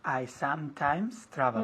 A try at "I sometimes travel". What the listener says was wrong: Muy bien, quiero ver los labios juntos. I sometimes travel, no sometimes. Sometimes, las dos M's. I sometimes travel.